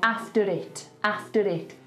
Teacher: with the stronger Birmingham accents, when you have an R with a vowel sound after it, it'll slightly tap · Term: linking R